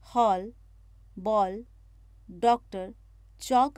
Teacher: इसका उच्चारण आ और ओ के बीच की ध्वनि के रूप में होता है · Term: आगत ध्वनि